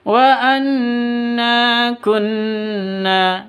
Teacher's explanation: nanya dibaca panjang karena ada alif diawali dengan fathah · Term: mad asli